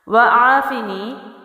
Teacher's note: واو جو ہے وہ پڑی حرکت کے ساتھ ہے، زبر ہے، جلدی چھوڑیں گے، ہونٹ گول کر کے پڑھیں گے